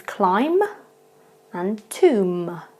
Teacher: So it just becomes climb and tomb. So you just don't hear that B sound at all at the end.